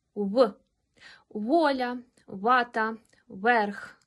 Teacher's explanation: звук в в українській мові ніколи не перетворюється на ф як у російській перед голосними аое він є губного губним і вимовляється так в